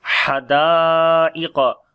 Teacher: Ha we read from the middle of the throat, dal we long due to alif madda, and also there is big mad sign on the alif.